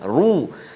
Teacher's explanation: Kita telah belajar sebelum ini ra baris depan ataupun dhammah baca tebal, kan baca tebal lah, ru.